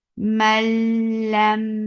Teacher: The sound is short. Mal, this is idgham without khunna, so there should not be any sound in your nose at all